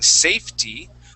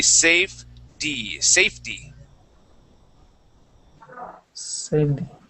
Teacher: we change that t to a d sound. So, instead of saying safety, we say safety.